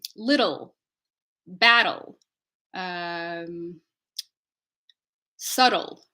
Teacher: L can be its own syllable we call this dark l in English